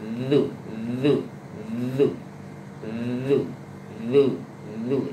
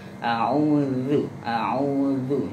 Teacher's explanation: Lidah agak dikeluarkan, digigit sampai ketika dikeluarkan suaranya bergetar. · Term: zal